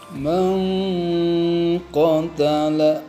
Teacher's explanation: dengung dari hidung cukup jauh jaraknya, maka disebut ifa abad, dan membaca dengungnya cukup jelas ditahan panjangnya dengung 2 harokat